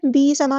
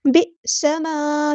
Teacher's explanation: हमज़ा साकिन है तो यहाँ पे झटका आएगा